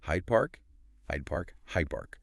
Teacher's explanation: The D sound in hide just turned into a B sound. · The P in park is a bilabial sound made with the lips. The D in hide is alviolar made with the tongue.